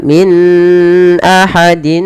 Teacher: harus dijelaskan antara nunnya dan tanwinnya, dan kita hukumi dengan bacaan izhar yang artinya jelas. Ya, ketika membaca min tidak boleh ditahan.